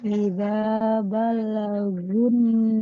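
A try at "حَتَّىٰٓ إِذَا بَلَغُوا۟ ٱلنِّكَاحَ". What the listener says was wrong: Jangan balla. Karena lamnya tidak bertasydid, tidak balla. Iza balagu. Iza balagun nikah.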